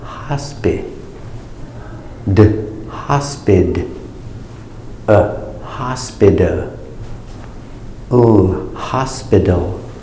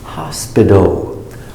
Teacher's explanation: the T between two vowels, it makes the D